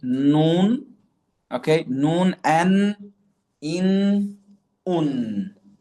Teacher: The letter noon, okay, is pronounced by placing the tongue just behind the makhraj of lam. So lam is going to be in front, al, and noon is going to be behind, an.